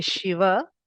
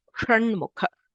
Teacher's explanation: For Shiva, the tongue touches ahead, whereas for sh, it should curl backwards.